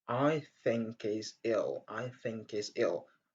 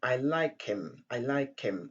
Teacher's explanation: Quand vous avez donc he au milieu d'une phrase ou bien à la fin d'une phrase, généralement, les H n'est pas aspiré.